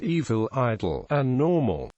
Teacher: In the Bristol area, a vowel at the end of a word is often followed by an intrusive dark L. Hence the old joke about the three Bristolian sisters, evil, idle, and normal.